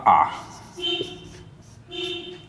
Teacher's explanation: ठीक है, तो इसमें जो है पहले होगा विवृत, विवृत स्वर, ऐसा स्वर जिसके उच्चारण में सबसे अधिक मुख हमारा खुलता है